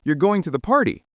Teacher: >> Example, if you say you're going to the party with your voice rising at the end, it's a question. You're going to the party with your voice falling, it's a statement.